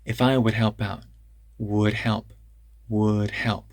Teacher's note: that D in would help stays present but it's kind of tapped